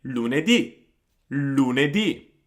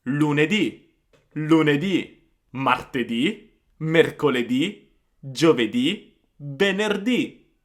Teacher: the E there almost disappears. I mean, of course it does not disappear, but it's much shorter than the U or the I at the end.